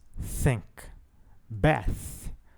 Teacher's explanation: esquerdo nós temos o fonema fricativo dental surdo que soa como em sua pronúncia não há vibração das cordas vocais por isso a sua classificação como surdo